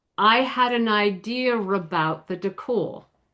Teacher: The intrusive R is putting an R in there in between those two words that doesn't exist. Again, like we mentioned, because we've got two vowels together that are neutral and we want we want to separate them.